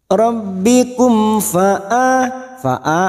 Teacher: Rabbikum mim sukun bertemu fa idhar safawi, mim sukun dibaca jelas tanpa mendengung.